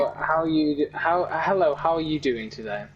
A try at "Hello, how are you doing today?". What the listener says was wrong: Yeah, that's, like, obvious, because you're saying certain vowels different. I feel like your I's sound different than I do. Like how like when you said doing, I feel like your I sounds different.